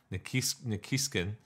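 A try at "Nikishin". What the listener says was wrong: There's no K at the end.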